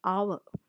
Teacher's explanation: If there is an H which is not pronounced, for example, an hour, HOUR, though it begins with H, the H is silent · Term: silent H